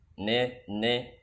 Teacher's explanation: kalau lidahnya datar atau mendekati fathah maka akan bunyi ne